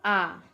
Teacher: जिससे पूरा मुंह खुल जाए उसको विवृत कहते हैं। जैसे आ होता है ना, अर्धविवृत, आधा मुंह खुले, जैसे अ, ए, औ, आधा मुंह खुले, हाफ ओपन।